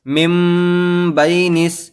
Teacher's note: تو یہاں ہوتا یہ ہے کہ جو نون ساکن ہے، جب نون ساکن یا تنوین کے بعد با آتا ہے تو پھر وہ نون ساکن یا تنوین کو میم سے بدل دیا جاتا ہے، تو پھر وہ نون باقی نہیں رہتا۔ لکھے میں تو نون لکھا جاتا ہے لیکن پڑھنے میں میم پڑھا جاتا ہے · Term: اقلاب